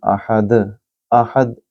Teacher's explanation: ہا کو دال کے ساتھ ملائیں گے، اور دال 5 حروف قلقلہ میں سے ہے، تو یہاں آواز گونجتی ہوئی محسوس ہوگی